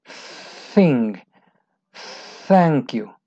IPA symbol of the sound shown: θ